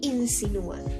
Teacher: entonces su fuerza se ubica en la u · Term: hiato